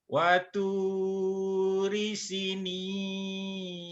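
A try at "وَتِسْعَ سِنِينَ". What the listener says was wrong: Sinya panjang. Waturi sinina. Sinya panjang juga. Yang panjangnya. Yang panjangnya tu, si, sama ni.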